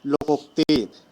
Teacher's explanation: तो लोक में अ और उ मिलकर के ओ हो गया लोकोक्ति। ठीक है।